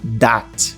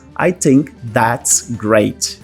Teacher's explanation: eles vão pronunciar that, com esse som um pouco mais próximo ao D. Então, se eu for falar aqui uma frase de exemplo, I think that's great, no inglês irlandês eu ia falar mais ou menos I think that's great.